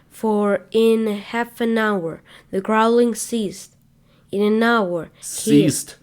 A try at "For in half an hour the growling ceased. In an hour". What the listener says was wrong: It's a period. It's a pause.